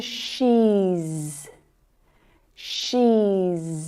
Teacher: vowel sounds are all voiced sounds so the sound that follows is z